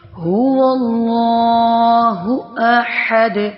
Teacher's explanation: ہو اقصی حلق سے ادا ہو رہا ہے، احد وسط حلق سے ادا ہو رہا ہے